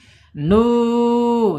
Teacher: Kemudian secara makhraj ada di mawadhi'ul jaub ya, di rongga mulut saja. Nunnya al khaisum, tapi u-nya mawadhi'ul jaub ya, harus ke rongga mulut, tidak boleh masuk hidung.